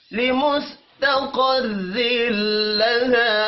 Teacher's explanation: قاف حروف مستعلیہ ہے پر پڑھا جائے گا، را کو زیر کی وجہ سے باریک پڑھنا ہے.